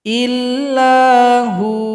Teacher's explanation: cara berhenti, waw disukunkan, ha dijadikan mad asli, dipanjangkan 2 ketukan.